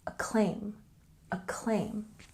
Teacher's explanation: a claim with a stress on the second syllable